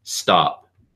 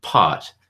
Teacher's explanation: you don't really see the paper moving at all but if I say pot you actually see a little bit of a movement there